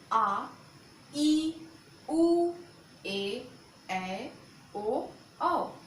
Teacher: दीर्घ स्वर, इसमें ह्रस्व स्वर की अपेक्षा दुगना समय लगता है, इसमें 2 मात्रा का समय लगता है। इसे द्विमात्रिक स्वर भी कहते हैं।